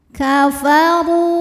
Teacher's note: Huruf ra dibaca secara tafkhim karena ra berharokat dhammah, maka ra dibaca dengan tebal. Kafaru. Ru hukumnya adalah mad tabi'i zahiri karena ada waw sukun didahului harokat dhammah, maka huruf ra panjang dua harokat.